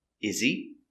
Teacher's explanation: Is he? The H is silent.